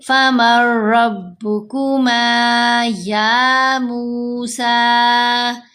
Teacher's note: اب اگر کوئی پڑھے فمر ایسے لمبا کر کے تو یہ غلط ہے، کیونکہ را کے اوپر ادغام تو ہے لیکن غنہ نہیں کرنا